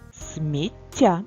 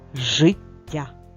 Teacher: запам'ятай звук ть подовжений у слові цей звук позначається двома однаковими буквами т і завжди подвоєний звук буде м'яким